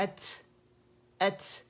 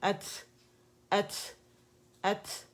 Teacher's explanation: اسی طرح دو لیٹرز اور ہیں ہمارے, تا ہے اینڈ کاف, اس میں بھی شدہ ہے لیکن یہاں پہ قلقلہ نہیں ہوگا کیونکہ یہ قلقلہ کے لیٹرز نہیں ہیں. یہاں پہ ہمارے پاس ہمس واضح ہوگا, ات. اگر میں اسے صرف سکون کے ساتھ پڑھوں ات اک, ایک جیسی آوازیں, پتہ ہی نہیں چلا.